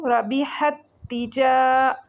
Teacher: ہا ہلکی لیٹر ہے، گلے کے درمیانے حصے سے پڑھا جائے گا. ہا کو سیکنڈ والی تا کے ساتھ ملائیں گے اور 1 سیکنڈ کے لیے رک کے پڑھیں گے · جیم کے ساتھ الف مدہ ہے، 1 سیکنڈ کے لیے اس کو لمبا کریں گے. پھر را ہے، را کو موٹا پڑھیں گے.